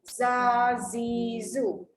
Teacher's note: Jadi hujung lidah ke gusi bawah. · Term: huruf zai